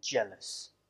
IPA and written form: ʤeləs (jealous)